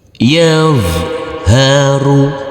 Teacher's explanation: Selanjutnya yaitu huruf dha sukun. Huruf dha tidak boleh dipantulkan, huruf dha sukun. · Tidak boleh dipantulkan untuk huruf dha sukun ini. Kita putus dulu, kita berhenti sampai di sini huruf dha sukun.